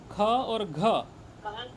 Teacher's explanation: अच्छा यह दिक्कत हो रही है आपको बोलिए क ख ग घ ठीक है देखिए दूसरा और चौथा दो और चार ये दोनों जो है आपका महाप्राण है क्या है महाप्राण महाप्राण ख और घ ये दोनों में ज्यादा हवा लगती है ठीक है तो क बोलेंगे और ज्यादा हवा लगा करके बोलेंगे ज्यादा प्राण लगाएंगे